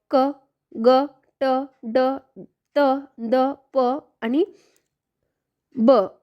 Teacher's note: स्फोटक व्यंजन ज्यांचा उच्चार करताना हवा आडवून जोरात बाहेर फेकली जाते